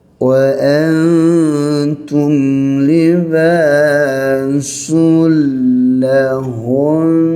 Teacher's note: panjangkan dengung melibatkan nun yang bersabdu. Sama ada kita berhenti ataupun tidak berhenti, kena panjangkan dengung.